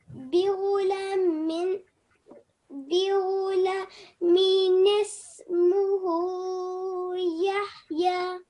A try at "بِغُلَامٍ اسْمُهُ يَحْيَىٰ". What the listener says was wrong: Well then, can you try it once more because it sound you give less time to this vertical fatha.